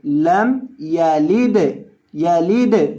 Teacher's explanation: دال کو ہلا کر پڑھیں گے کیونکہ دال حروف قلقلہ میں سے ہے